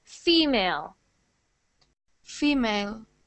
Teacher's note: it's the stress on the first syllable